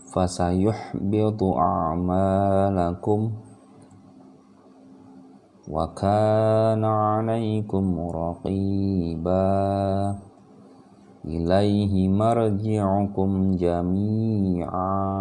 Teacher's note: tidak lagi jami'an, tapi dia sudah dipanjangkan dan suara tanwinnya hilang ketika dia ada di akhir kalimat. Sekali lagi, kalau dia mau disambungkan misalkan dengan kalimat yang ini, baru dia an-nya hidup lagi. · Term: mad arid disukun